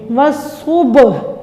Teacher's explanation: با ساکن ہے تو یہ حروف قلقلہ بھی ہے، اس کو جنبش دے کے ہلا کے قلقلہ کر کے پڑھیں گے